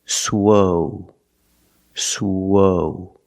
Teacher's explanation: for the first syllable use the long o like know and go